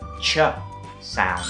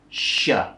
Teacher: ch มันจะแบบออกสั้นๆกระชับแต่ว่า sh มันจะยาวหน่อยนะคะ